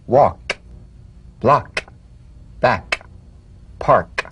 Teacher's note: tongue back pive consonant with the tongue in the G position let the tongue spring away in the soft unvoiced click of the K drum beat · away in the soft unvoiced click of the K drum beat feel a crisp tap and a pulsation in the back of the tongue tap the K drum beat in these words walk block back